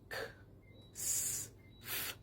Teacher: The sounds K, S, P, F, sh, and ch are all voiceless. If you put your fingers by your throat, you do not feel a vibration.